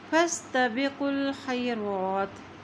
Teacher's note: اسی طرح خا کی زبر کو یا کے ساتھ ملائیں گے کیونکہ یا کے اوپر بھی جزم ہے، اور را کے اوپر کھڑی زبر ہے اس لیے اس کو ایک حرکت لمبا ادا کریں گے